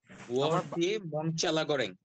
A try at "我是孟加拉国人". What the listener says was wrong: হ্যাঁ, পারফেক্ট।